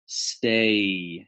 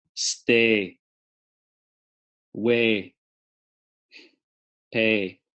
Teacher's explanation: There's what's called an off glide. The diphthong comes apart a little bit.